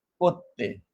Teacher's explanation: অনেক সময় আমরা উচ্চারণ করতে গিয়ে র উচ্চারণ করি না। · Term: রকার লোপ